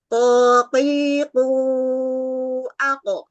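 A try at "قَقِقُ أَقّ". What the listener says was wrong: Belum. Itu tempatnya kaf dipakai. Kurang ke belakang. Dihempas, dikeluarin, terus makhrajnya kan bagian belakang, depannya ufula, depannya indil-indil itu loh. Kalau orang Jawa bilang, oh, qiqu aku. kurang ke depan sedikit. sedikit ke ufula itu. Terus vokal O-nya dihempasin, mulutnya agak dibuka. Dihempaskan. Jangan ditahan. Dihempasin.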